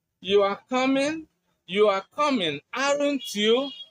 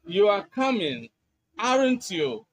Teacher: If you use the rising tone, you are expressing certainty. But if you use the falling tone, you are indicating confirmation.